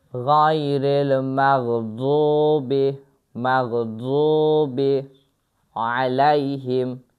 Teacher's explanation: d ilə z hərfinin qarışığıdır, amma daha çox d səsi çıxmalıdır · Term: dad hərfi